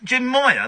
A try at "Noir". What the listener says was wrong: No, Noir. French. As in French. No, with an N at the beginning, Noir.